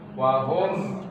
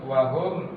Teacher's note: izhar syafawi mimnya tidak boleh ditahan langsung wahum langsung wahum R mimnya dibaca jelas nah di sini